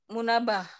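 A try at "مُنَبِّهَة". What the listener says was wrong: Munabbiha. Ini kasro ini. Munabbiha. Iya kasro ini. Jadi dia kasro. Setelah di bawah tasdid ini kasroh.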